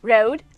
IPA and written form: roʊd (road)